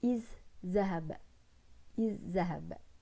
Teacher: ada zal mati bertemu dengan zal berbaris fathah. Jadi tapi pasti orang akan mendengarnya seperti ditasydidkan